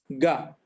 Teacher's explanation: మూడోది అల్ప ప్రాణమే గ, అది ఘోషం కూడా.